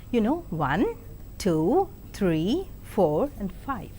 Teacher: Rising tone is used while enumerating or listing, like 1, 2, 3, 4 and 5.